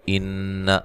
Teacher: نون مشدد پہ غنہ ضروری ہے۔